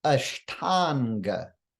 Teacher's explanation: this comes together with Anga meaning Lim we get Ashtanga so the short uh plus uh turns into the long ah when those two sounds come together ah plus uh equals ah